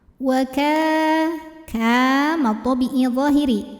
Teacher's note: karena ada Alif yang didahului baris fathah maka huruf Kaf ini dipanjangkan dua harakat